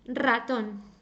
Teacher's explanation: when a word begins with R even if it's only one R it's always going to sound strongly